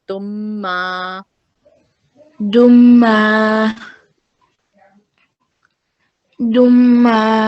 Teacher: This dal will be merged with mim mushaddad.